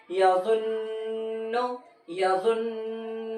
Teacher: نون کی آواز کو ناک میں تھوڑی دیر چھپانا ہے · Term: غنہ